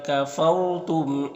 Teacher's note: را ساکن سے پہلے فا کے اوپر زبر تو را کو پر پڑھیں گے، میم میں اظہار شفوی ہوگا.